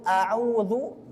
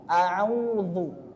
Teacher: Huruf ain letaknya di tengah tenggorokan